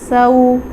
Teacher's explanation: سین کے ساتھ سیٹی کی آواز آتی ہے